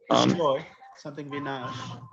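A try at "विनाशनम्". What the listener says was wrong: But Bina Shanam, not Binash, Bina Shanam.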